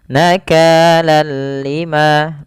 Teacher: Nakalanal lima tidak tapi langsung saja nakalan lima langsung tidak ada penahanan · Bi dengan la tidak ghunah berarti dengan tanpa ghunah. Artinya kita membacanya hanya idgam saja tanpa disertai dengan ghunah. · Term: idgham bila ghunah